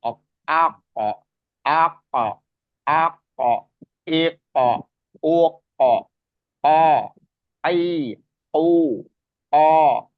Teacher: tempatnya lidah paling dalam perbatasan antara rongga tenggorokan dan rongga mulut ya lidah paling ujung paling dalam Nah itu k ya maju